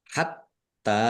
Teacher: tnya ada tasdidnya dibaca dobel ditekan dan ditahan biar tampak dobel. Tak fathah berdiri mad thobi'i.